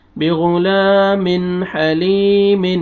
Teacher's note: یہاں پہ دیکھیں تنوین 2 زیر کے بعد حروف حلقی میں سے حا ہے، آپ نے یہاں پہ اظہار کرنا ہے، آگے یا مد ہے، یا جزم سے پہلے زیر ہے، آپ نے لام کو کھینچنا ہے، اور یہ لام کے اوپر دیکھیں کھڑا زبر ہے، یا الف مدہ کے قائم مقام ہے، آپ نے لام کو کھینچنا ہے